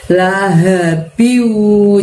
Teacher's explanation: Nah, biunya di situ adalah seperti kalian lihat di tulisannya, ba kasrotain, tapi N-nya dimasukkan ke huruf waw di depannya dan didengungkan atau tahan 2 harokat. · Haknya di situ kalian keluarkan suaranya dari tenggorokan bagian bawah ya, lebih tebel ya. Laha, la pendek, hak pendek, lalu biunya tahan selama 2 harokat.